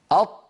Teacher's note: هناك هواء يريد أن يخرج ولكن المخرج أمامه مقفول تماما